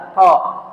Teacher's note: Berarti huruf qaf ini ada di lidah paling dalam